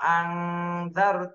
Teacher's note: নুন সাকিনের পরে ইকফার হরফ জাল এজন্য এই নুন সাকিনে ইকফা গুন্না করতে হবে